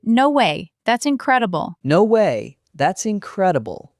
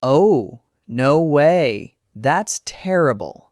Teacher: See, same phrase, two different tones. The first one, you go up in pitch, you sound excited. The second one, your voice drops, you sound shocked, sympathetic. The words are the same, the tone changes everything.